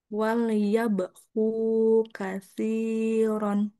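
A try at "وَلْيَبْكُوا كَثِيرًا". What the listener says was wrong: Oke, kakak hati-hati lam sukunnya. Jangan sampai meman, meman tuh wal, wal. wal. Tapi karena tadi kakak lepas lidahnya kan tuh gigi gusi atas ya. Wal. Karena wal langsung kita ke huruf ya. Jangan dilepas lidahnya. Wal ya. Wal ya.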